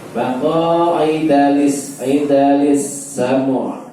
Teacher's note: Ain ketika sukun tidak boleh berhenti tapi harus mengalir ya.